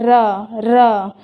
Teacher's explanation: र जब बोलते हैं ना तो जीभ जो है वो तालु के साथ क्या होगा, टकराएगा और ऐसा लगेगा कंपन हो रहा है। र जीभ पे कंपन हो रहा है। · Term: प्रकंपित वर्ण